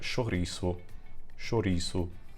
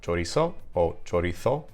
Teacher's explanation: So it's a SH sound in Portuguese where it's a CH sound in Spanish